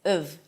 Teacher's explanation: However, when it's reduced, it's pronounced as of. So the ah sound turns into a schwa, again, and the V remains for now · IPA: əv